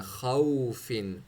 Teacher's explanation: ایک تو خا کو موٹا اور منہ کو بالکل سرکل اپنے بنانا ہے، خوفن، خا واو زبر خاؤ، فا فا زفر خوفن۔